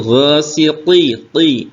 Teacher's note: qofnya ini diberi tebal yaitu dengan cara mengangkat pangkal lidah